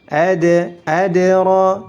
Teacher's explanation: Dalnya dipantulkan karena memiliki sifat qalqalah. Kemudian ra-nya ditebalkan, ra bukan ra atau re atau re.